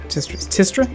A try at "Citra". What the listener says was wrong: It's Citra. The first T is silent.